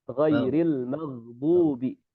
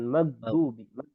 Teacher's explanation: huruf ghain itu dia tidak sampai menahan suara. Jadi jangan sampai ghain ini disamakan seperti huruf G yang kita kenal.